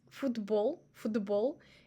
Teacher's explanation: As you see, it's more like D sounds than T. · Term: opposite vocalization